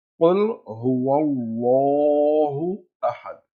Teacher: We pronounce it round or full mouth because it comes after fatha.